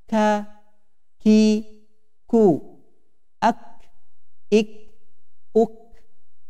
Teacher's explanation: pangkal lidah sedikit ke depan, yaitu kaf